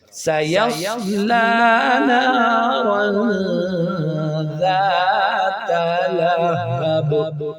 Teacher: جب ہم وقف کریں گے تو با کو ساکن کر دیں گے، تو ساکن ہونے کی وجہ سے اس پر دو زیر پڑھی نہیں جائے گی، تو اس صورت میں قلقلہ ہوگا